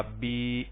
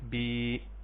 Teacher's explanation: یا ساکن اس سے پہلے زیر، اس کو ہم یا مدہ کہیں گے اور اس کو ایک الف کے برابر لمبا کریں گے، یا اس کی جگہ پہ کھڑی زیر بھی استعمال ہو جائے گی.